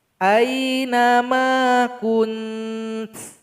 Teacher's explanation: Cara berwaqaf pada kalimat kuntu adalah kita dengungkan dulu 2 harokat kunnya, baru kita kasih bunyi hamas dari huruf ta.